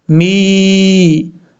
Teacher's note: اب اس کے بعد میم کے بعد یا ہے، میم یا زر می، میم کے بعد جو یا ہے یہ یا مدہ ہے، ایک الف کی مقدار اس کو لمبا کر کے پڑھا جائے گا